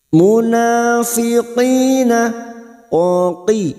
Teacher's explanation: Ril munafiqina, muna alif kecil di atas, dua harokat kita panjangkan, mad tabi'i. Munafiqina, qi huruf qaf adalah huruf isti'la. Qi jangan samakan dengan kaf. Qina kasrah diikuti asukun, dua harokat kita panjangkan, mad tabi'i. · Alif kecil di atas dua harakat kita panjangkan